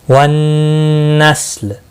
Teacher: نون مشدد پر گنہ ہوگا، لام ساکن پڑھا جائے گا وقف کی صورت میں